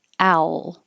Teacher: i'm using the dark l so the middle of my tongue is pressing up instead of the tip of the tongue